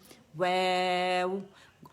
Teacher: ہونٹوں کی گلائی سے واو سٹارٹ ہو رہا ہے، اور ہونٹوں کی گلائی پہ ہی ختم ہو رہا ہے. واو، کمپلیٹ رولنگ، دانت ٹچ نہیں ہوں گے لپس کے ساتھ